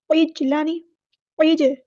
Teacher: جیم ساکن پہ کلکلا ہوگا، اس کی آواز باؤنس بیک ہوگی، پلٹ کر واپس آئے گی ، عجلانی، عج، ایسے پھسلتی ہوئی آواز آنی چاہیے، عجلا، لیکن